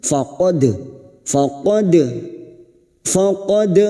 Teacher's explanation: faqad dal sukun yang mati asli di tengah kalimat qalqalah sugroh